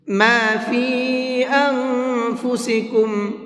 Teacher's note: اس نون کے اندر اخفا کریں گے اس لیے کہ نون ساکن کے بعد میں فا ہے، اور فا اخفا کے حرفوں میں سے ہے، تو یہاں نون میں اخفا کریں گے۔